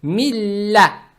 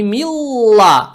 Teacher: Далее стоит буква лям. Она удваивается. Фатха приобретает оттенок я. То есть милля.